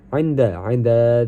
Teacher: dihukumi idgham bila gunnah karena nun mati bertemu dengan dal dan baca tanpa dengung